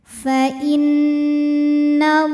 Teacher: Lam jalalah atau lam pada lafaz Allah dibunyikan secara tafkhim karena huruf sebelumnya berbaris fathah. Maka dibacanya tebal. Pangkal lidah naikkan.